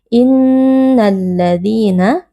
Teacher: Inna nun tasydid dibaca dengan berdengung.